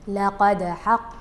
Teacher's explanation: ملاحظة أخرى، اهتمي بالقاف بالقلقلة، أو فهنا لقد، هذه حرف من حروف التفخيم القاف، لقد حق القول، القاف ما كانت مفخمة بما يكفي